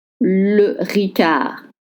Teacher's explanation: Don't pronounce the D at the end.